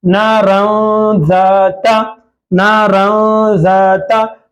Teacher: जबान मसोड़ों को नहीं लगाना है, बल्कि जबान को दरमियान में रखकर नून की आवाज को निकालना है · तो नून की आवाज को, नारन, रन में जो नून है वो नून की आवाज को नाक में छुपाएंगे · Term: इख्फा